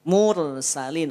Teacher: ro dibaca tebal karena sebelumnya ada harakat domammah